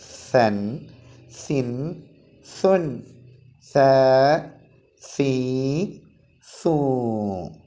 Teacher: നാവിൻ്റെ തല മേലെ മുൻപല്ലുകളുടെ അടിയിൽ വെച്ചുകൊണ്ടാണ് ഉച്ചരിക്കേണ്ടത്.